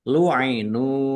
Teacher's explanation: nun dumah wau sukun mad thobi'i panjang dua harakat